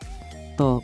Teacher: त उच्चारण स्थानको आधारमा दन्त्य हो, प्राणत्वको आधारमा अल्पप्राण हो,